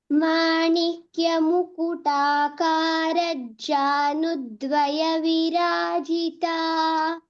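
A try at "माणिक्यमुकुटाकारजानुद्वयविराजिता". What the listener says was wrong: in Manikya Mukutakara Janudvaya Virajita, there's no Dvitva in Janu. So it is just Manikya Mukutakara Janudvaya Virajita. So there's no Dvitva. So it's not Mukutakara Janudvaya. It's just Manikya Mukutakara Janudvaya Virajita.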